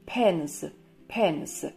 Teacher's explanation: Буква S читается как звук Z. В конце слова, после звонких согласных и гласных. Например, в слове pens, pens, ручки.